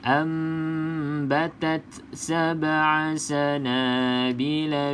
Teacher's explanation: macam saya akan baca rapat bibir atas dan bibir bawah. Yang penting juga dengung 2 harakat. Okay, Kalau tutup tapi tak dengung, salah. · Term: iklab